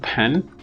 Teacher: coarticulation or regressive assimilation which here appears in the form of nasalization of the previous vowel being assimilated to the following nasal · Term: anticipatory coarticulation